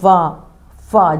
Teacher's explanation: निचला होठ और दांत दोनों के प्रयोग से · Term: दंतोष्